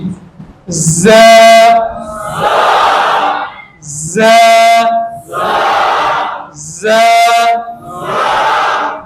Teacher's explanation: دانت بند ہو رہے، اندر سے زبان کی نوک لگ رہی ہے